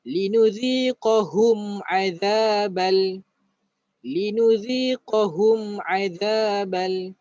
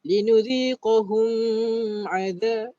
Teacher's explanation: Kerana mim ini ada tanda mati, ditulis tanda mati, maka jangan baca dengung. Kena baca secara jelas.